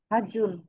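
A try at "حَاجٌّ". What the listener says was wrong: একটু হাটা টান আছে তাই না? হার পরে আলিফ আছে।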